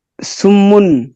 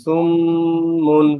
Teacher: তো গুণার সময় কমপক্ষে এক আলিফ পরিমাণ নাকের ভিতর গুনগুন করে পড়তে হয়। এক আলিফ যতটুকু সময়, ওই সময়টা গুণার ক্ষেত্রে করতে হয়। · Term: ওয়াজিব গুণ